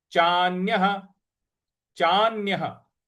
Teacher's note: चा के बाद जो न है उस पर हमको आघात देना है, और य के बाद जो विसर्ग है उसके आगे कुछ नहीं लिखा है, इसलिए उसका उच्चारण हमको ह ले आना है।